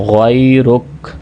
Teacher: غائن حروف مستعلیہ میں سے ہے، اس کو موٹا پڑھنا ہے، غَيْرُكَ۔ ایک مرتبہ ہم ورڈ بائی ورڈ دوبارہ ریڈ کر لیتے ہیں، آپ بھی ساتھ پڑھتے جائیں گے تو انشاءاللہ فائدہ ہوگا۔